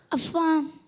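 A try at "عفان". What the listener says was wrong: अफ़ान आइन से, आइन तो निकाल, आइन खा गया। आइन कहाँ से अदा होता है? हाँ तो निकाला ही नहीं आपने। अफ़ान।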